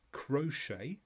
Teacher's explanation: So it comes from a French word, so we don't pronounce the final T.